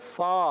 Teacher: فا کا مخرج ہے اوپر والے دانتوں کے کنارے, نیچے والے ہونٹ کے تر حصے سے جب لگتے ہیں تو ادا ہوتا ہے فا, ادا ہوتا ہے فا.